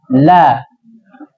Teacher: La itu nempelnya di langit-langit depan